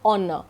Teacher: you start the pronunciation or utterance with O, honor. H is silent.